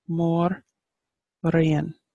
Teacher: And when you put it together, we have, again, there's Great Queen, which is Mórrígan, Mórrígan. So Mór, this accent over the O lengthens the vowel, and the accent over the I lengthens that vowel. So you've got Mórrígan.